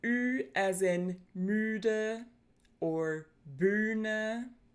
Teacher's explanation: The ü is pronounced slightly backer and lower than the E. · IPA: /y:/